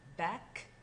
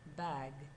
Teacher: The voiceless k and voiced g sounds are back of the tongue velum stops. They are known as velar stops.